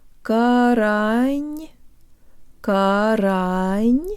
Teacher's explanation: Because the tongue will be high for the next syllable, the N is pronounced with a high tongue too, and you can hear the tongue rising if we slow it way down.